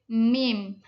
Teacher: Nah, kalau mim itu dari bibir. Mim mutawasit sedang majhur adanya getaran. Mim murok tipis.